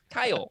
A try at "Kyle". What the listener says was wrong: To the rest of the English-speaking world, it is one syllable.